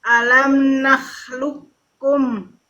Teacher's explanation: terdengar jadi satu kan padahal ada Q ada Kaf tapi dibacanya jadi satu